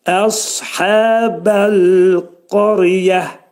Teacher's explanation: Əshəbədə sad hərfi dil kökdən yuxarı qaldırılır, dolu sad hərfi deyilir və sadın qalınlığını əyə vermək olmaz.